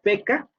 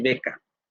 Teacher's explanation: el fonema sordo-oclusivo bilabial y el fonema sonoro-oclusivo bilabial